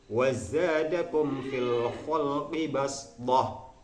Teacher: Shad kemudian di situ ada huruf Sin kecil maka di sini shadnya adalah wajib untuk digantikan menjadi Sin